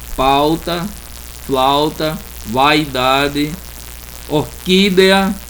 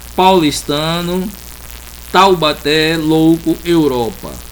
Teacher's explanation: sempre a vogal eu pronuncio, ela está primeira e depois vem uma semivogal